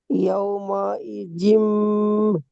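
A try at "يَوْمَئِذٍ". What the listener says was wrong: ইজিম বলে জাল টান হয়ে যাচ্ছে। ইজিম হবে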